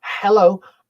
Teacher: So a voiced glottal fricative. Sorry, that's a voiceless glottal fricative